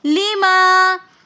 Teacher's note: لما کے اندر الف مدہ ہونے کی وجہ سے ہم اس کو ایک الف کی مقدار کھینچ کر پڑھیں گے